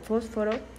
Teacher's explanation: los dientes se aproximan a los labios dejando un pequeño espacio para la salida del aire y pues podemos notar que las cuerdas vocales no vibran así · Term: consonante F